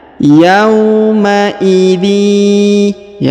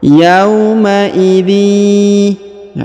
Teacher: maka tanwin innya melebur menghilang ke huruf ya, ditahan dan ditekan 2 harokat. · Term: idgham bi gunnah